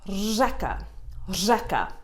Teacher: It's the r. It's the rolling R that's brought to a stop. · A little bit of a roll, r, combined with a je, řeka, řeka.